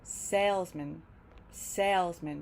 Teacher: One sound, stressed, man. But when man appears in salesman, it gets reduced and it sounds more like mint. Salesman, salesman, because we're stressing sales and not man.